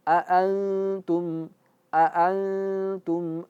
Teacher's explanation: Dan dengung, berdengung dan masuk masuk hidung. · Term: ikhfa